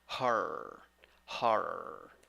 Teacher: In the second syllable, you don't have o. You have schwa. · 2 syllables. The first syllable is the stressed syllable. The vowel, ho, o. With H before it, it will be ho.